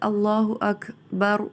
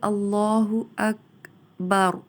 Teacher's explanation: کاف کو دبا دیا جائے گا، یعنی روک دیا جائے گا، اس کو ہلایا نہیں جائے گا